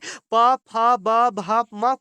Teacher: ओट से हम लोग प फ ब भ म को ओट से बोलते हैं।